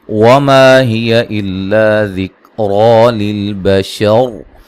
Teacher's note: للبشر، یہ جو را ہے جب وقف کریں گے را کو موٹا ادا کریں گے، ملانے کی صورت میں را باریک ہوگی.